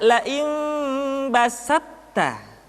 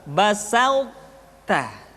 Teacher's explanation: Sifat to, sifat itbaq yang dimiliki oleh huruf to masih tetap ada, sehingga ketika mengucapkan to bertemu dengan ta terdengar suara yang menebal